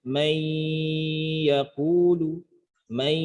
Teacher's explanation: Kalau terjadinya karena idgham seperti man ketemu yaqulu, dibaca may yaqulu, may, maka bunyi i-nya itu dibaca panjang karena sifat juga gunnahnya, satu sisi karena ada idgham.